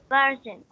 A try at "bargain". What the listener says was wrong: Bargain, not bargain. bargain. This is ga sound, not ja. Bargain.